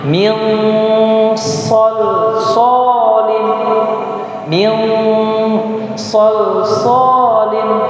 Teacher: Tapi berbeda dengan ikhfa. Dia itu pertengahan antara idhar dan juga idgham, samar-samar atau bahasanya samar-samar.